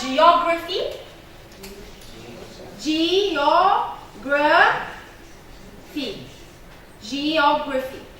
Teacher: Stress on the third from end syllable. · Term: third to last